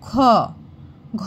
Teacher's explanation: হচ্ছে দেখো মহাপ্রাণ অর্থাৎ এই খ উচ্চারণ করতে গেলে আমাদের একটা ভেতর থেকে জোর দিতে হচ্ছে